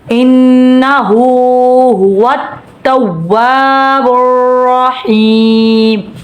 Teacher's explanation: نون مشدد 1 الف کے برابر غنہ ہوگا.